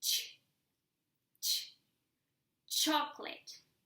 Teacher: You put your tongue as if you were saying t, t, and then the sound ch, chocolate or chill.